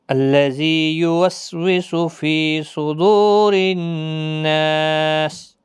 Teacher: صاد حروف مستعلیہ کا حرف پور پڑھنا ہے، دو واو مدہ ہے، را زیر کی وجہ سے باریک پڑھا جائے گا، نون مشدد پر غنہ ہوگا، سین جب ساکن ہوگا وقف کی صورت میں 3 سے 5 الف کے برابر کھینچ کر وقف کریں گے۔